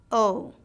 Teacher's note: your jaw Rises with the tongue and Clos it slightly o the tongue Glides from mid level to the near roof of your mouth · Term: long o sound, long O sound